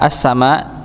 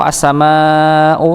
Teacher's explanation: alif salah satu di antara huruf mad bertemu dengan hamzah maka muncullah hukum mad muttasil atau mad wajib maka dia panjang empat atau lima harakat